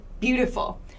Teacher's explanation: This is how native speakers say this word, beautiful. So beau has the highest amount of stress, the most stress. T has no stress. · So beau has the highest amount of stress, the most stress. T has no stress. Full has a little bit of stress. So there are 3 different levels of stress in English that give it kind of this rhythm.